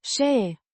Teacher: Și, a conjunction meaning, and, pronounced, shee, similar to the she in English, but with a slightly shorter and less emphatic sound